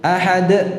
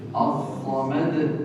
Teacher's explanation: Jadi ditutup dengan suara hamzah.